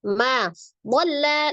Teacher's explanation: Ma dhalla lam tasdid, lamnya sifatnya tawassut atau bainiyah, tengah-tengah ya, antara siddah dan roghah, mengalir sebagian. Dhalla sonya mad, ada alif sebelumnya fathah di huruf sod.